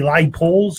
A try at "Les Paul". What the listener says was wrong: A Les Paul. The S is silent, you know.